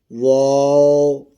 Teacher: اسی طرح واؤ آ گیا ہے، غیر مدہ ہے، دونوں ہونٹوں کو گول کر کے تمام بند کرنے سے